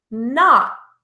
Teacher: I'm not producing the t sound. I am not releasing my tongue, pushing air through the mouth to produce the t sound. Instead, the ending T is held.